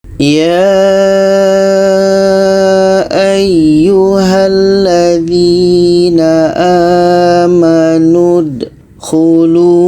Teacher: yang ada tasydid jadi kita baca Bismillahirohmanirohim ya ayyuhalladzina amanud Hulu kita panjangkan dulu 6 harkat baru kita sambung dengan tasydidnya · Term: mad lazim kilmi mutsaqqal